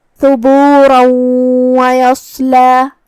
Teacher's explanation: ادغام کا معنی ہے حرف کو حرف میں داخل کرنا، تو ہم یہ تنوین کو واو میں داخل کر کے غنہ اور تشدید کے ساتھ یہ حکم کو ادا کریں گے